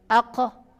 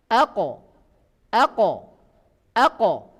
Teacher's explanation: Bersih dari nafas. Nafas tidak boleh mengalir keluar. Aqo. Ini qaf.